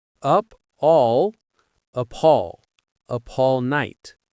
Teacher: Notice how we link the words up and all? The P from up and the A from all connect. It sounds like appall. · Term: linking